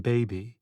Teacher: are both plosive sounds made by bringing the lips together